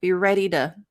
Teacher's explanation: with that reduction the T became a flap T so it was not overly aspirated